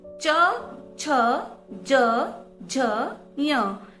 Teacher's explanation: जब हम च वर्ग वाले व्यंजन बोलते हैं उनका उच्चारण स्थान तालु होता है।